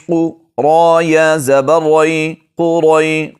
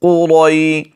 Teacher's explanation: قوف اور را کو موٹا پڑھیں گے